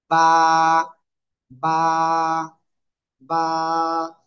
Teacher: দুই ঠোঁটের ভেজা অংশ আমরা কি করবো লাগিয়ে জাস্ট ছেড়ে দেবো এক আলিফ টেনে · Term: বা অক্ষরটা